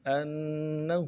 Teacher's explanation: حمزہ کو نون کے ساتھ ملانا ہے، نون کے اوپر تشدید ہے، زور دیں گے، اور ہا کو آگے لام کے ساتھ ملانا ہے.